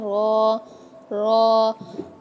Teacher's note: जब ज़बान का बैक साइड, जब ज़बान का जो है पिछला वाला हिस्सा, ज़बान के पुष्ट जब कहाँ लगेगी? ऊपर के मुकाबिल तालु से लगेगी, तब जाके रॉ अदा हो जाएगा